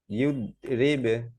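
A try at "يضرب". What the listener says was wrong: ইয়দ, ইয়দ, ইয়দরিবে, ইয়দ না, ই, ই দিয়ে দতকে ধরবে, ইয়দ,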